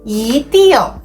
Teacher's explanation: if 一 is followed by a syllable in the fourth tone, it changes to the second tone